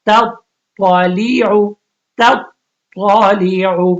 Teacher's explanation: اب یہاں پہ دیکھیں دونوں سیم مخرج ہے لیکن اب فرق یہی کرنا ہے آپ نے تا اور طا میں فرق پتا چلے کہ تا کو آپ نے باریک پڑھنا ہے اور طا کو موٹا پڑھنا